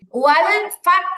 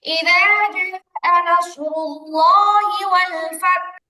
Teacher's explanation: হাই যখন সাকিন হবে, ওয়াল আমরা সবাই খেয়াল করি, আমি কথা বলার সময় আওয়াজ না করি। ওয়াল ফাত যখন বলবো ঠোঁটটা স্বাভাবিক থাকবে, ঠোঁটটা গোল হয়ে যাবে না।